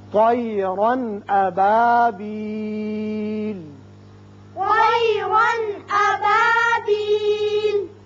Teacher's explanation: یہاں تنوین کا جو نون ہے اس پر اظہار ہوگا، اظہار حلق